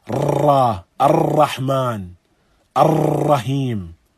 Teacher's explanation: And a takrir is this reverberation of the tongue.